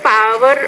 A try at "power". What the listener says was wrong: Again, power, you need to pronounce that with more air.